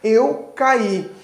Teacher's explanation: ela possui dois grupos de fonema um deles é constituído aí pelo fonema a e o outro pelo I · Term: duas vogais